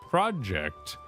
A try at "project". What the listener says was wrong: Project? the wrong emphasis on the wrong syllable.